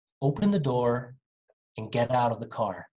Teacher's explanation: when they speak fast, they don't say and, they just say an.